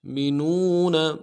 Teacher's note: نون کو واؤ کے ساتھ ملانا ہے، واؤ مدہ ایک الف دال میں کھینچیں گے ، نون کو نرم سے ادا کریں۔ مینون، افتؤمنون ببعض با